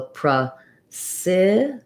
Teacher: Stress on the si. So we have a clear I here that's longer. Letter C says the S sound.